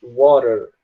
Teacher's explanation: A palavra água, o americano fala water. Ele pega o T e transforma em R. Mas no caso, britânico, australianos falam water mesmo. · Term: transforma o T em R